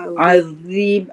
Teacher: Dha tu dia kena keluar lidah sikit. Dia Dia tebal.